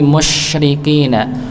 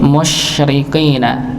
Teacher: Jadi kalau huruf Sinin itu Tengah lidah Nggih syin jadi e Tengah lidah keangkat ng bertemu dengan langit langit ya tidak dirapatkan agar nafasnya menyebar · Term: huruf syin